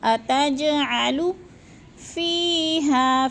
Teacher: جیم ساکن ہے، حروف قلقلہ میں سے ہے تو اس کو ہلا کے پڑھنا ہے